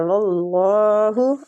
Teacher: اللہ کی لام کو ادھر پور پڑھیں گے